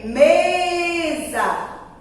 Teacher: Aonde a gente demorar mais a pronúncia é a sílaba forte. Foi o me.